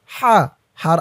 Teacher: শব্দ হা জবর হা এর উপরে জবর দিলে উচ্চারণ হয় হা আওয়াজটা গলার ভিতর থেকে চিকুন হয়ে বের হবে